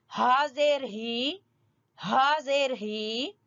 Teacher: اقصی حلق جو حلق کا سب سے نیچے والا حصہ ہے